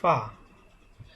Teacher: ঠোঁটের পেট অর্থাৎ নিচের ঠোঁটের পেট সামনের উপরের 2 দাঁতের আগার সঙ্গে লাগাইয়া